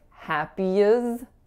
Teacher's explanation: we need to take the final sound in the word happy and move it over to our next word. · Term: linking